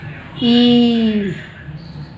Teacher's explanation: जब हम दीर्घ ई का उच्चारण करते हैं तो दो मात्राओं का समय लगता है